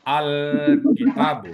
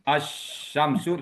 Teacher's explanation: Alif lam bulan terang dia, jadi alkitab, lamnya jelas. Asy-syamsu, lamnya pindah ke syin.